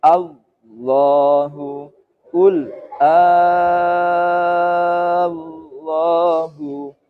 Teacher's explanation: ketika mengucapkan lafadz lam jalalah yang jalalah tafkhim, lidahnya mengangkat